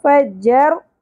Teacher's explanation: را تھرتھراہٹ کے ساتھ اور پر بھی ہوگا فجر نا الف حرف مدہ ایک الف کے برابر کھینچنا ہے